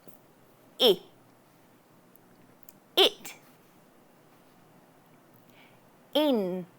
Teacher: it's like you're pulling your cheeks back and saying E, but then just keeping it really short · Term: short I sound